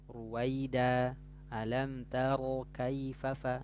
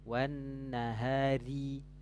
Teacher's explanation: Kalau dia fathah dhammah tebal, ruwaida, alam taro kaifa fa. Nah, itu ro-nya tafkhim karena fathah dhammah. Tapi kalau ini wan nahari jangan jangan wan nahari nah, tipis ya, karena dia huruf ro itu dia kasrah tipis ya.